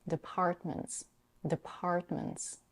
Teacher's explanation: In the word departments, she slightly aspirates the p in the second and stress syllable